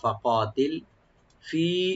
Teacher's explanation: ফাকাতিল, ফা ওপেন রাখবেন, কফটাকে একটু ডিপ করে একালিফ টানবেন, লাম সাকিন হয়ে যাবে, এখানে কলকালা হবে না